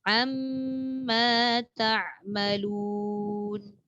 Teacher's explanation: Am tu dia tak boleh lalu je, dia kena tahan dulu.